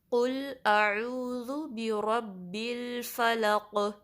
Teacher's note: ٹھیک ہے۔ اب اس پہ فلق کر کے رک نہیں جانا، قاف کو پر بھی پڑھنا ہے اور اس پہ قلقلہ بھی کرنا ہے ، یعنی جب لام کو قاف سے ملائیں گے تو اس